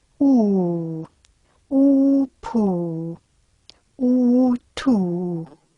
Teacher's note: it's pretty obvious that the tongue is back in the articulation of oo. Another thing that you can notice in the articulation as well is that in oo and o, the lips are rounded, and you should be able to see the rounding of the lips during the vowel.